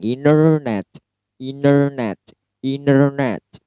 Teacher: Jadi T-nya hilang atau silent. Jadi cara pronounce-nya untuk kata internet yaitu internet. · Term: silent T